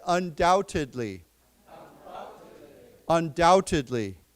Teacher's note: just remember, we do not pronounce the B